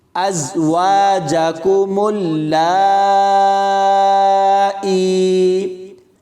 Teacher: ازواجکم اللائی، حمزہ زا زبر از، واو الف زبر وا، از وا، جیم زبر جا، کاف پیش کو، میم لام پیش مل، لام مد کھڑی زبر لا، ملا، حمزہ یا زیر ای، ازواجکم اللائی۔ یا کے اوپر چھوٹا حمزہ ہے، اس کو یا کے ساتھ ملا کر پڑھیں گے، اور ایک الف کی مقدار تک کھینچ کر پڑھیں گے